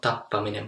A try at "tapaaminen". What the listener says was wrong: So it's better to pronounce three vowels than make it too short.